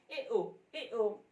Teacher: अर्धसंवृत, अर्धसंवृत में आधा बंद, मुंह जैसे आधा बंद रहता है तो उसमें ए ओ आधा बंद करके भी आप उसको बोल सकते हैं।